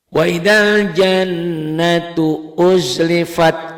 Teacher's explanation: ada dengung ke hidungnya karena ini termasuk huruf gunnah